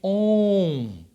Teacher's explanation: Você vai ver o composto, onde está o O e o M, você vai ver um som de on. É o O nasalizado, o anasalado.